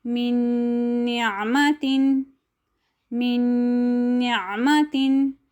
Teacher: یا میم واو نون کو ہم نے مدغم کر کے پڑھا لیکن غنہ کے ساتھ پڑھا